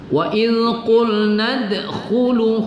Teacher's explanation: Dal berbaris sukun kita membaca Qalqalah di situ